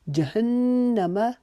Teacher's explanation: نون مشدد کے لیے ہم ایک الف کی مقدار یہاں پر رکیں گے